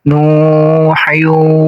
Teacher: Kemudian di sini ada tanwin menghadapi wawu, namanya idgham biguna, sama kayak yang tadi ini. Idgham biguna, cara bacanya ditahan 2 harokat